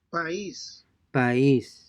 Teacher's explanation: if you have an accented I in a word, the sounds are pronounced separately